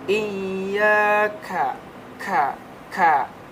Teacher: dibacanya ada desah nafas keluar sedikit ya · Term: Hames, desisan napas